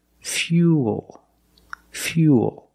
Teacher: when you link the uh plus the dark L, the mouth opens a little bit, but it's not a real syllable.